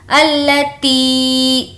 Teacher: تی کو کھینچ کر پڑھیں گے کیونکہ یا مدہ ہے